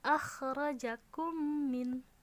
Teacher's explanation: Sama dengan yang sebelumnya, yaitu mim yang disukun itu dianggap seperti tidak ada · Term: idgham mutamatsilain